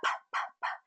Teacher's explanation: it's going to be like a pop of air, where there's kind of an explosion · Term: P sound